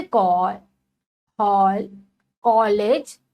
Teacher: यह आ और ओ के बीच की ध्वनि है, जैसे कॉल, हॉल, कॉलेज आदि। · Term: आगत वर्ण